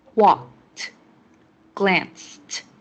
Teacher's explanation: These verbs all have the past tense ed, but they are pronounced in 3 different ways. In walked and glanced, the ed makes a t sound.